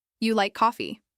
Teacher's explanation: If you say it with a steady, flat tone, it sounds like you're making a statement.